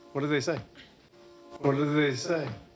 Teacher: we can hear drop the T sound in what and just pronounced the D in do.